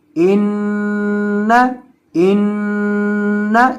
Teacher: इस तरह एक अलिफ के बराबर इसको गुन्ना करना है, नून की आवाज़ को नाक में ले जाकर पढ़ना है।